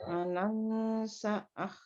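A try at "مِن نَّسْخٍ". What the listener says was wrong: Sah. Bukan sa'ah. Sah. Langsung sin ke kho langsung.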